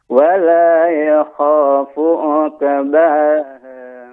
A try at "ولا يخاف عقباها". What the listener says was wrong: Uqu. Nah, ini juga qafnya juga tebal, tidak uqe. Bukan uke, tapi uqu. Wala yakhafu uqbaha. Jadi bukan hanya sekedar uqe, bukan hanya sekedar uke, akan tapi lebih tebal lagi uqu ya, karena qaf adalah huruf isti'la ya.